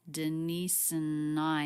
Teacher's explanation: And it's really smoothly linked together. The ending S sound links into the schwa, Denise and I, and then the N sound links right into the I diphthong, Denise and I.